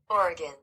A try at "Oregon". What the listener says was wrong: you have been saying Oregon this whole damn time not Oregon okay it's not oron